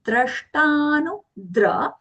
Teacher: Shatkon wala sha is coming as aghatandra. The ta that is coming with sha, that is alpaprana